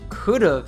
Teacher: he does include a soft V sound at the end of could have here